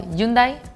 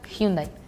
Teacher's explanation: the H is muted in Spanish. Even if it's in the middle or the star at the end, it's muted.